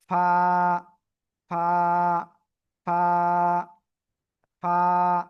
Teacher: নিচের ঠোটের পেট উপরে দুই দাতের আগার সাথে লাগাবেন লাগিয়ে মোটা আওয়াজে না কিন্তু সিম্পল হালকা মুখ দিয়ে বাতাস বের করে উচ্চারণ করতে হবে